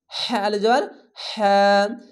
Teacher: একটু বাতাস বের করে হ্যাঁ, এক আলিফ টেনে পড়বেন।